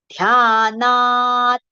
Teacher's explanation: ध्याना long and then partial ta, half ta.